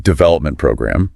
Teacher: the main stress goes on development which seems to be the rule for these types of phrases yeah usually the first word gets the emphasis in compound nouns